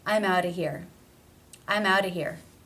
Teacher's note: the word of is generally reduced to simply being the schwa sound no consonant